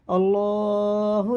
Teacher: اللہ کا لام زبر کے ساتھ ہے، پورا ہوگا۔